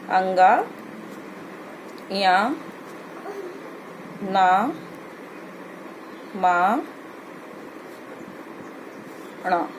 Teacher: ये इनका उच्चारण स्थान हम नासिका के द्वारा करते हैं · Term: अनुनासिक वर्ण